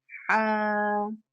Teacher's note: سا کو ہم سا پڑھیں گے، سا، جیم، حا، خا، حا حلق سے ادا ہوگا۔ حا جو ہے وہ حلق کے ابتدائی حصے سے ادا ہوتا ہے